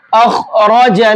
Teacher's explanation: خا کو بھی اور را کو بھی، دونوں حرفوں کو موٹا کر کے پڑھیں گے۔ مرعی، را کو بھی موٹا کر کے پڑھیں گے۔